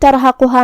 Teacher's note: کلمت ترہقها میں یہاں را کا حکم ہے تفخیم. ہمیں را کو بھاری آواز میں پڑھنا ہے کیونکہ را پہ جزم ہے لیکن اس سے پہلے والے حرف پہ تا پہ زبر ہے